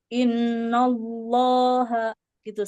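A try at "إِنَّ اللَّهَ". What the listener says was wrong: Inna nunnya jangan terbawa. Inna Allah. Nah, seperti innallah.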